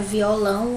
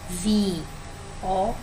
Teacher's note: Aqui, palavra violão, o lão é o mais forte. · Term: sílaba tônica